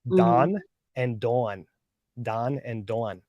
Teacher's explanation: there was two different names that were very common Don and Dawn Don and Dawn but in California they're the same name Don